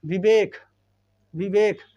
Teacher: जब तुम बोल रहे हो ना तो होंठ तो चल ही रहे हैं और दांत भी हल्का हल्का टच हो ही रहे हैं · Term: दंतोष्ठ